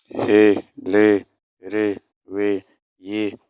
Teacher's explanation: He, le, re, we, ye ne se prononce pas avec le nez.